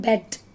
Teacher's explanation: In bed. It is open mid front unrounded vowel.